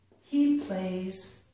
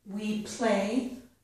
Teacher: We play does not have the final Z sound. He plays does have the final Z sound.